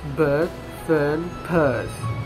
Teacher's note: this is a mid central vowel which is used in most english accent as a hesitation sound written er but which many learners find difficult to copy the